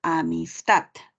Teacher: La palabra amistad, la sílaba tónica es la última, no lleva tilde por cuestiones ortográficas, ¿no?